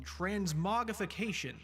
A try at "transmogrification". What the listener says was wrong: I think people actually do pronounce the R. It's not actually silent.